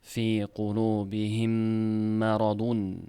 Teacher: Bu yerda ham mim ikkinchisiga kiritilyaptida. Shadda bilan g'unna bilan ikki harakat ushlab o'qinilyapti. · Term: idg'om